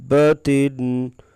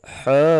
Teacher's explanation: اگر شد ہو تو اسے مد لازم کلمی مثقل کہتے ہیں، اس کی مقدار 5 سے 6 الف کے برابر ہے، یعنی یہ سب سے لمبی مد